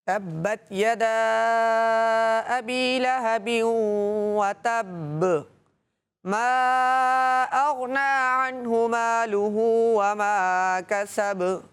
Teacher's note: قلقلہ خوب ظاہر ہوگا با میں